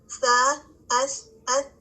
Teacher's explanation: اس میں سانس جاری رہتی ہے، اور یہ وہ لیٹر ہے جو کہ سانس کے ساتھ ادا ہوتا ہے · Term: ہمس